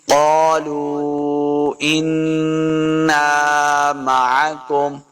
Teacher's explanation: قاف کو موٹا پڑھنا ہے.